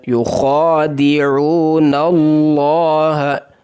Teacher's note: یخادعون اللہ، حروف مدہ واو کو ایک الف کے برابر، ہا کو سینے سے نکالنا ہے، لام کو پر پڑھنا ہے.